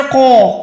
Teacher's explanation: قالوا بلا، اچھا قوف آپ کو پتا ہے کہ جب بھی الف کے ساتھ آتا ہے، ٹھیک ہے نا، قوف الف کے ساتھ آ رہا ہے تو الف بھی موٹا آ جائے گا، قوف تو ویسے ہی موٹا ہے تو اس کو آپ نے قو کر کے پڑھنا، قوف الف زبر قو، اوکے۔